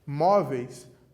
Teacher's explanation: A sílaba tônica é o mó, uma paroxítona, a penúltima sílaba, também terminada em ditongo